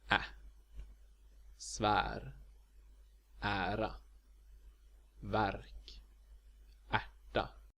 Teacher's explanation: Before an R, this letter is pronounced A, which is the same vowel as in English cat.